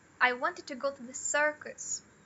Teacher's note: para dar esse significado de corrigir o que a pessoa entendeu errado, talvez, você dá ênfase aqui, no caso, pro circus.